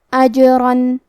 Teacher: کلمت اجرن میں جیم پہ جزم ہے تو کیونکہ جیم بھی حروف القلقلہ میں سے ہے تو ہم یہ حرف کو ہلاتے ہوئے یہ کلمہ کو پڑھیں گے